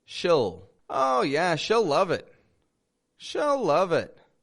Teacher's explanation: I'm not saying she'll and I'm not saying she will I'm saying sh'll